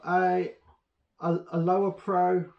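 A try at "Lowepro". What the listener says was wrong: No, it's low pro. There's no R in it. Low.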